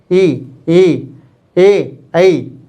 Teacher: ये अग्रस्वर होते हैं, क्योंकि इनको उच्चारण करते हैं तो हमारी जीभ का अगला भाग इसमें कार्य करता है। जैसे ई, ऐ, जब हम इनका उच्चारण करेंगे तो हमारी जीभ का जो अगला भाग होता है ये ऊपर उठा हुआ हमें प्रतीत होता है